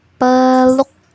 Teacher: Huruf U diucapkan namun tidak bebas karena posisi mulut langsung membentuk fonem selanjutnya yaitu fonem K. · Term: suku kata tertutup